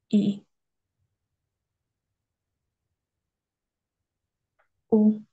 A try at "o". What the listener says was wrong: le bas, c'est vraiment bas. Descend vraiment. Ou, ou, ou.